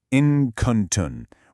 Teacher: Instead of pronouncing a hard, clear N, you sort of soften it, you conceal it, and you transition into the next letter with a light nasal sound. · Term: ikhfa